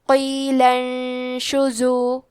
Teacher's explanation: اخفاء کا معنی ہے چھپا دینا تو ہم نون ساکن کو چھپاتے ہوئے اور غنہ کے ساتھ یہ حکم کو ادا کریں گے. شین پہ اور زے پہ پیش ہے تو ہم یہ دونوں پیش کو ظاہر کریں گے.